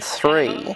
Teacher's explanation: to make the th sound in three, we bring our tongue up so that it touches our top front teeth. The tongue moves, the teeth don't move, but both are involved in making the sound.